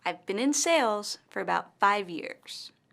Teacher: in this sentence the word sales and five years are stressed